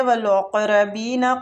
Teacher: وا کو کھینچیں گے، الف مد دئی یالین ہو رہے، والاقربین قاف مستعلیہ ہے، قلقلہ بھی ادھر کریں گے، ساکن قاف ہے